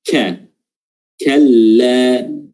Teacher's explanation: Huruf kaf makhrajnya di pangkal lidah dan mengandung hams